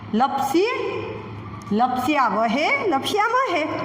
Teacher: આ સ છે એ દંતીય સ થઈ જશે, દાંતથી બોલવાનો શ